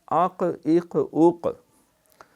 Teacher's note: تو یوں سمجھیں کہ یہ زبان کی جڑ اوپر کے تالو سے یوں جا کے ٹکراتی ہے، وہ ایک گوشت کا لوتھڑا جو تھوڑا سا ہمارے حلق میں اس کو کوا کہتے ہیں لٹک رہا ہے، وہ زبان کی جڑ کڑک جا کے اس کے ساتھ لگتی ہے زور سے، تو وہاں سے پھر یہ قاف ادا ہوتا ہے